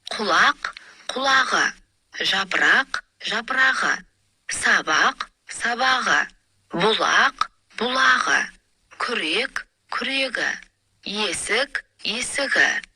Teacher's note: Қ дыбыстарына аяқталған сөздерден кейін дауысты дыбыс келсе, Қ дыбысы Ғ дыбысына, К дыбысы Г дыбысына айналады.